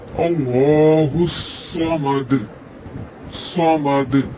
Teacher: صاد سیٹی والا حرف ہے.